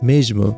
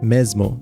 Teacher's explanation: Another sound change with the letter S is that before a voiced consonant, it turns into a j sound in European Portuguese. Meanwhile, in Brazilian Portuguese, it just turns into a z sound. For example, the word for same would be pronounced as mesmo in European Portuguese, but in Brazilian Portuguese, it would be pronounced something like mesmo. · before a voice consonant it turns into a j sound in European Portuguese meanwhile in Brazilian Portuguese it just turns into a z sound